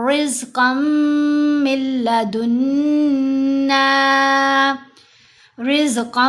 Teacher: قاف کو میم سے ملاتے ہوئے غنہ ہوا، لیکن میم کو لام سے ملاتے ہوئے غنہ نہیں کرنا